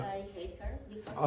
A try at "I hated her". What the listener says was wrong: I hated. No, you said hate, you didn't pronounce the last consonant. No, I hated.